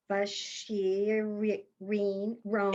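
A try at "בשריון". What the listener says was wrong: It's a sin. It's a sin. It's Vasir Yon. There you know that yud and that dot is an O.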